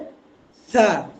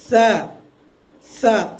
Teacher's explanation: উপরের দুই দাঁতের আগা, এই জায়গা থেকে উচ্চারণ হবে সা।